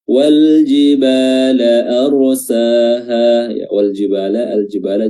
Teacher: lamnya dibaca izhar, dibaca jelas, ya, di sini namanya izhar al-qamariyah.